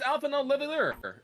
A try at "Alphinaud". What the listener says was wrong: there's a D at the the D is silent.